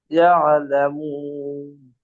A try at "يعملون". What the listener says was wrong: ইয়ালামুন নেই, ইয়ামালুন।